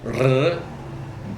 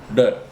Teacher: It's not a complete roll like R, but it is maybe one flick of the tongue.